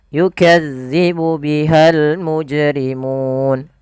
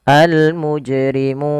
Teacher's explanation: panjangnya adalah boleh dua harakat boleh pula empat harakat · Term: Mad Arid sukun